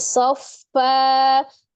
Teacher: fathah tanwin dirubah menjadi fathah dua harakat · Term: Mad iwad